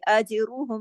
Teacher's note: جیم پہ کلکلا کریں گے، را کو موٹا پڑھیں گے، جیم کو ہلا کے اجرہم، کیونکہ جیم پہ جزم ہے.